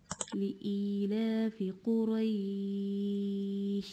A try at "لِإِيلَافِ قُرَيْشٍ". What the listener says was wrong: The Ra, Quray, not like Qura, Quraysh. The opening of the mouth again. So all the fatha open wider. لإيلافي not like لإيلافي. لإيلافي قريش.